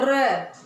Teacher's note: परकंपित यानी र को हम बोलेंगे तो हमारी जीभ में कंपन होगा